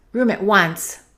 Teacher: Let's connect room and at, and let's hold the T.